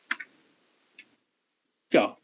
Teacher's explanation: It begins with stop, ends with fricative. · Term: affricate